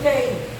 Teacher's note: Tu só tem um som nasal no E, 2 letras e um som nasal.